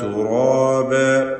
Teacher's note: തുറാബൻ എന്ന് പറയുമ്പോൾ റായിനും അതിന്റെ ദീർഘാക്ഷരമായ അലിഫിനും തഫ്ഖീമാണ്.